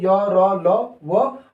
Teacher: तो अंतस्थ व्यंजन हो गया आपके कौन? य, र, ल, व और मैंने कहा तालव्य, वत्सर्य और दंतोष्ठ।